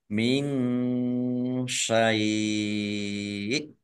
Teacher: Nun sukun bertemu dengan huruf shin, bacaan ikhfa, dibaca samar-samar.